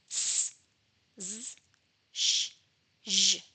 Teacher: Now that we have described all fricative sounds, it is important to know that we can divide fricatives into those that are sibilant and those that are non-sibilant. Sibilant sounds are those consonant sounds that produce a hissing or a hushing noise when they are produced.